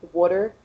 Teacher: from central sylvania i pronounce it with a d water but if you're from eastern pennsylvania they say water with like a u instead of an a